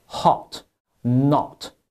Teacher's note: the o is a widely open sound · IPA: 英音/ɒ/→美音/ɑ/